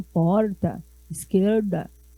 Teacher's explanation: quem mora no interior de São Paulo usa muito o R retroflexo